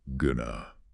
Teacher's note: The words going and two completely collapse into one single unstressed sound